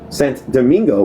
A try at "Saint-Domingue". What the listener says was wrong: It's Saint Domingue. There's no O at the end. It's DOMINGUE.